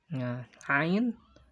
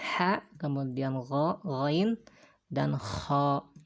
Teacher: tempat keluarnya huruf tersebut adalah kerongkongan atau tenggorokan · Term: huruf halqi